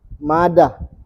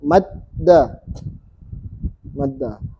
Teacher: tapi kalau ada tasdidnya maka dalnya ditekan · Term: tasydid